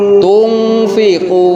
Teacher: samar suaranya itu beralih ke huruf eng